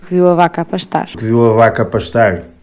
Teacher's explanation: Os sotaques do Norte são aqueles que realmente se destacam, trocando os Vs por Bs. Tanto a do Porto como o de Braga dizem biu a vaca, em vez de viu a vaca.